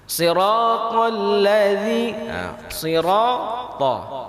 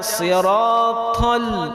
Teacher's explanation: Ta di sini dibaca tebal dan tidak berangin. Jangan dibaca siratal.